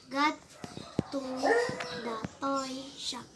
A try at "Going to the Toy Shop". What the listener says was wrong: Is this got? You said you read this as got. This is Okay, going to the toy shop.